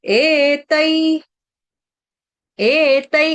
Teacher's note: त के ऊपर दो मात्रा है तो उसको तय नहीं पढ़ेंगे, तई पढ़ेंगे।